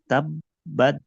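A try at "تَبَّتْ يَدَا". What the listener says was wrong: তাব্বাত ইয়াদা, তাব বলে থামা যাবে না, হ্যাঁ, যেহেতু এটা একটা শব্দ। হ্যাঁ, আমাদেরকে একসাথে বলতে হবে।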